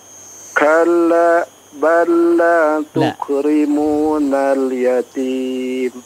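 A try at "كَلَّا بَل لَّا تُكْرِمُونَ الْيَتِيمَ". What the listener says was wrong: Itu tadi waqaf atau apa? Iya, kalau diteruskan berarti di wasal ya, jangan terputus. Kalla balla tukrimun ya, jangan kalla balla.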